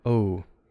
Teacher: The O glides off into an U. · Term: glided